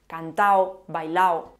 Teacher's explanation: Se tiende a perder la D intervocálica entre A y O. Por ejemplo, los participios de la primera conjugación.